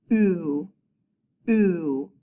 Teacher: Our lips are definitely close together and forming a circle. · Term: circle vowel